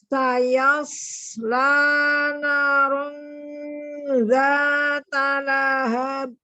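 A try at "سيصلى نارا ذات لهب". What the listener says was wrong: Tidak dijeda. Qalqalanya tidak dijeda. Lahab, lahab, lahab. Ayas. Hati-hati, odnya tidak dibantu dengan bibir. Nanya 2 harakat juga. Nanya 2 harakat. Nanya 2 harakat juga.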